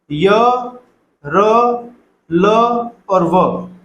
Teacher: ये जब व्यंजन बोले जाते हैं तो इनके उच्चारण में तालु, मूर्धा, दंत, ओष्ठ इनके आपस में सटने से ये व्यंजन बोले जाते हैं, पर इनमें पूर्ण रूप से स्पर्श कहीं नहीं हो पाता।